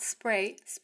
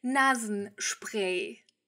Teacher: Be sure to make the sh sound, not s